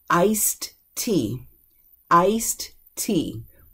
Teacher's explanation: We'll drop that D because you already got a T sound there.